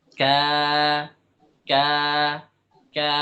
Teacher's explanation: Terdengar jelas bahwa alif ini mengikuti huruf qaf. Ketika kita ucapkan ikut tebalnya qaf. Tidak kita baca seperti enggak. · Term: alif itu tebal